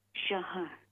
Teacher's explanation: یہ ہا ساکن ہے، اس کے بعد را بھی ساکن ہو جاتی ہے نا وقف کی وجہ سے، تو شہر نہیں کہیں گے، ہا ساکن ہے، شہر.